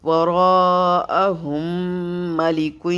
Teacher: اس میم ساکن کو نہیں پڑھیں گے اس پہ غنہ کریں گے وراءہم ملک یہاں پہ بھی ہمارا ادغام ہوگا ادغام مع الغنہ